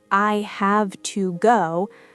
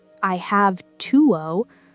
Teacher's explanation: The to is reduced to a weak ta sound.